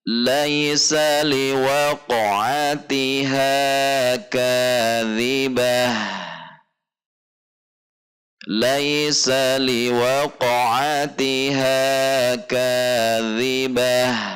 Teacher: ketika waqof menjadi kaidah harus ada aliran ha sukunya tidak langsung habis